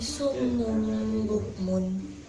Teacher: dengan cara mengganti bunyi huruf nun sukun atau tanwin dengan huruf mim mati, disertai dengan dengung selama 2 harokat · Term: iklab